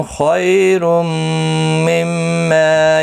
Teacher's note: خیالین ہے، تھوڑا نرمی کے ساتھ کھینچ کر ادا کریں گے. اور تنوین کے بعد یرملون کا میم آئے، ادغام مع الغنہ ہوگا، میم مشدد پر گنہ ہوگا. ما الف مدہ بھی ہے، ایک الف کی مقدار کے برابر کھینچ کر پڑھیں گے.